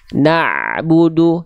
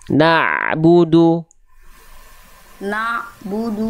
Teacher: Ain itu keluar dari tengah tenggorokan, dia punya sifat namanya tawasud, Bunda. Tawasud itu dia mengalir sedikit suaranya. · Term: ain sukun